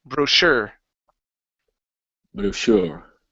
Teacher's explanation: this word here is pronounced brochure with the stress at the very end